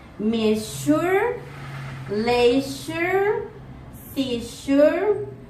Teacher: Place of articulation is palato-alveolar. Manner of articulation is fricative.